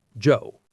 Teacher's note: The D and Y sounds combine to make a J sound.